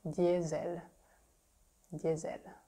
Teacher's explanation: The S is pronounced Z in French because it's between two vowels.